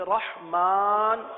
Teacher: ہے الرحمن، یہاں پر را آ گیا، اس را کو پر پڑھیں گے، ہا کو واضح کریں گے